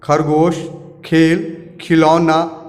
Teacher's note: ख का उच्चारण मुख के ऊपर वाले तालु और जीभ के बीच से होता है